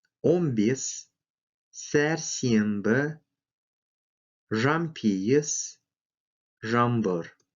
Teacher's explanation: Звуки «н», «н» под влиянием последующих звуков «б», «п» произносится как «м».